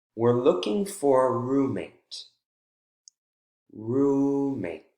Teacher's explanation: falling intonation right after that strong syllable in the focus word